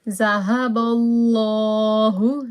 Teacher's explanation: Raise your voice because of the fatha before Allah name. ذهب الله بنورهم وتركهم في ظلمات لا يبصرون.